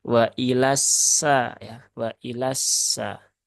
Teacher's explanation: lamnya tidak dibaca panjang Tetapi dia langsung masuk ke huruf SY yang bertasdid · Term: lam syamsiah